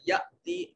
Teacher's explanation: حمزہ ساکن ہے، جھٹکا سے ادا کیا جائے گا